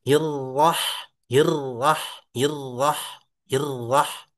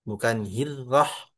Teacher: Walaupun sebelumnya ini kasrah, tapi ini karena ada alifnya maka atau hamzah wasal ya kita sebutannya. Maka dibacanya tebal. Irrahroh, irrahroh. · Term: ro tebal